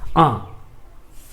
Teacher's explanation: मुख के साथ साथ नाक पर भी असर पड़ रहा है, नाक से भी ध्वनि बाहर निकल रहा है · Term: अनुनासिक